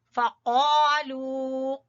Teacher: क़ाफ ज़बान की जड़ से